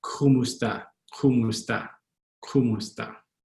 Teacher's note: That k in the back of your throat. English, it's very ka, but in Tagalog, it's more in your throat.